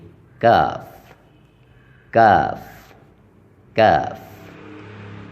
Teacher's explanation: کاف کاف ادا ہوتا ہے قاف کے مخرج سے ذرا منہ کی جانب ہٹ کر، یعنی آگے کی طرف، ذرا منہ کی جانب ہٹ کر، جیسے کاف کاف کاف۔